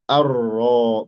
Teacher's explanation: Setelah hamzah wasal arro bukan alro arro arrahman arrahim warro mufakhamah ro dibaca tebal